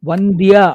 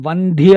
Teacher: వంద్య అంటే నమస్కరించడం అల్ప ప్రాణ. మహాప్రాణ పెట్టి వంధ్య అంటే గొడ్రాలు.